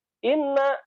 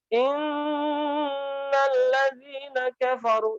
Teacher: Ketika bertasydid dia nunnya itu ada pada level yang sangat tinggi sekali, nunnya itu sampai berasanya itu sampai ke rongga hidung itu sampai terasa banget gitu ya.